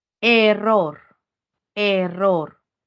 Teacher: Encuentro la sílaba tónica en ro. Era una palabra aguda porque era la última sílaba.